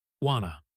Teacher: When you say want quickly, your tongue is already in position for the t and the to just follows · This is a classic weak form combination. Want to almost never remains two separate words in speech. It becomes wanna.